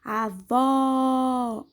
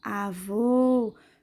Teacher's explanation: Avô, fecha a boca. Então, quando eu abro a boca, o som é aberto. Quando eu fecho a boca, o som é fechado